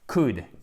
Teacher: On ne prononce pas le L